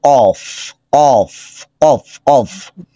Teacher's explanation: জিহবার গোড়া তার বরাবর উপরের তালুর সাথে লাগে জিহবার গোড়া টান করে উপরে চলে যাবে যেবার ঘোড়াটা উপরের দিকে